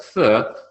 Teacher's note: the tongue is sticking out and I'm using the top teeth and to extend the bottom teeth to help make that sound